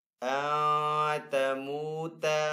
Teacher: نون ساکن کے بعد تا حروف اخفا میں سے تو یہاں پہ اخفا والا غنہ کریں گے